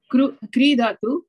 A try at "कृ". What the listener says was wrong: Kru. It is not kri.